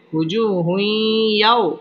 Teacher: তানবিনের বামে ইয়া আসার কারণে হুই ইদগামে বা গুন্না গুন্নার সহিত মিলিয়ে পড়তে হবে